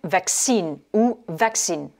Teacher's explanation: Vous pouvez avoir l'accent sur la première syllabe ou sur la deuxième.